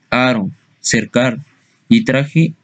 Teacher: La letra R puede representar dos fonemas distintos dependiendo de la posición en la que aparezca. El fonema vibrante simple de aro, cercar y traje en posición intervocálica.